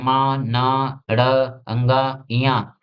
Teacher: ऐसी ध्वनियां जिनके उच्चारण में हवा नाक से बाहर निकलती है मुंह से नहीं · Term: नासिक